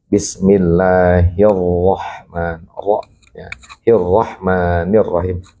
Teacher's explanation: kalau di sini kebetulan rohnya berbaris fathah, nah, jadi bacaan tafkhim Bismillahirrahmanirrahim.